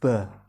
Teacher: gigi geraham sifatnya yang terakhir huruf ba letak makhorijul hurufnya yaitu safawiyah atau keluar dari dua bibir